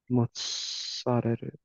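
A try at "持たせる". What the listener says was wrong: You put like a glottal stop in there. I think about what you said, like mozzarella would be like that, which is sadly not right. There's no glottal stop in here. So, sarere.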